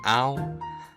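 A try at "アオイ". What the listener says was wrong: Aoi? Aoi. It's like 3 syllables.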